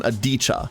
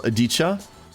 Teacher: Aditya. And if so, the second I should not be really pronounced, more of an Adicha.